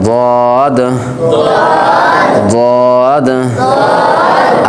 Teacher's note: জদ অক্ষর বাম পাশের মারির দাঁতের গোড়া থেকে মোটা করে পড়তে হয়।